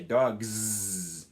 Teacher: So that's why in cats, it ends with a s sound because T is voiceless, so it's natural just to keep using the voiceless s sound. But in dogs, the g sound is voiced, so it's natural just to keep your voicing status going. And you say dogs.